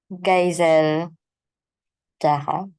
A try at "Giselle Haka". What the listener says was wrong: So, pagka may J, dapat dapat H.